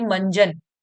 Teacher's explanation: ध्वनि में मंजन में आधा ना सुनाई दे रहा है